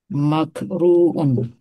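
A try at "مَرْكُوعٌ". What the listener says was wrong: Maf'run atau markuun? Nah, markuun, roh dulu. Markuun.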